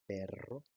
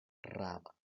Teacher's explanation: en la vibrante múltiple, esta vibración es más sostenida